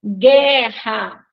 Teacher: Vejam que nós não escutamos o som do U, né? Então, aí a gente tem GU, que é um dígrafo.